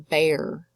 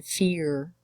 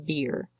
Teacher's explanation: you'll note that these aren't exactly your long or your short vowels they're again changed Modified by the addition of that R